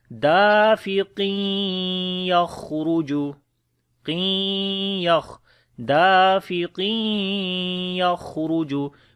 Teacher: this qaf we connect with the ya, it will be idgham with gunna then